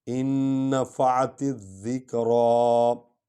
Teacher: فذکر ان نفعت الذکریٰ، الف زین نون ان، یہ 2 نون ہیں، یہ بھی نون ہے، یہ بھی نون ہے، لیکن ہم جزم والی نون کو چھوڑ کر شد والی نون کو پڑھیں گے۔ · تے اور ذال کو اکٹھے پڑھیں گے کیونکہ ذال پر شد ہے، الف لام کو چھوڑ دیں گے، ہاں لکھیں گے، پڑھیں گے نہیں۔